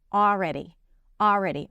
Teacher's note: she pronounces it with the L, already, but know that you can drop the L.